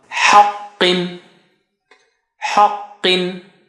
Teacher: Ha is low, qa is high sounding